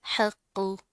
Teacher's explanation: हा को हलक से अदा करना है, ठीक है। क़ाफ मोटा पड़ा जाएगा, जमा कर पढ़ेंगे।